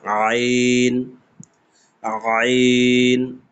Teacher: এই যে আইন উচ্চারণটা একদম গলার কণ্ঠনালী থেকে চাপ দিয়ে বের হবে